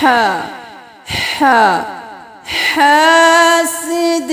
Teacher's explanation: ہے، ومن شر حاسد حاسد، اب حاسد بھی نہیں کرنا اور ہا کو گلے کے بالکل درمیان سے نکالنا ہے، آواز بالکل صاف ہو